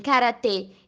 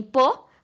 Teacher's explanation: a vogal média alta, como E em karatê e O em pô